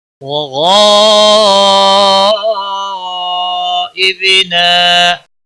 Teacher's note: غین حروف مستعلیہ میں سے ہے، اس کو پر پڑھیں گے۔ غاد متصل ہے، بڑی مد ہے، 5 الف کے برابر کھینچ کر پڑھیں گے۔